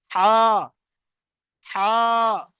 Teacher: আর যেটা বড় হা, ওটা কিন্তু নলির প্রথম ভাগ থেকে, নলির উপর থেকে একদম প্রথম ভাগ থেকে উচ্চারণ হয়